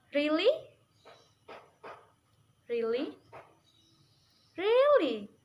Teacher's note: You use a rising falling tone each time, but in slightly different way.